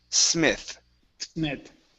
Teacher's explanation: use a theta at the end of that word.